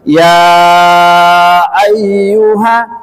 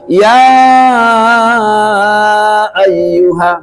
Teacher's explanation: berapa panjangnya majaiz munfasil itu boleh tiga ketuk boleh empat sampai lima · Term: Mad Jaiz munfasil